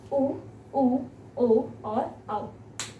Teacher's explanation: इनको जब आप उच्चारित करेंगे आपका मुख गोल हो जाता है, इसलिए इसको हम वृत्तामुखी कहते हैं।